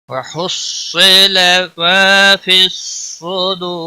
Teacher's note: وحصل ما فی الصدور، اور را جب ساکن ہوگا تو یہ موٹا بھی پڑھا جائے گا وقف کی صورت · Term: را موٹا